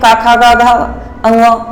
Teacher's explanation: इनके उच्चारण सबसे पहले हवा मुख के रूप में मुख में रुक जाती है, फिर धक्का देकर बाहर से निकल जाती है। मतलब पहले हल्का सा रुकेगी, फिर ऐसे लगता है जैसे वायु बाहर, हवा या वायु एक ही बात है, बाहर निकल रही हो। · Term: स्पर्श व्यंजन